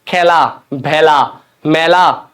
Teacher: মুখের আকৃতি যেহেতু একটু বড় হচ্ছে, একটু বেশি বড় হচ্ছে, বিবৃত হচ্ছে, সেজন্য এটাকে বলা হচ্ছে বিবৃত উচ্চারণ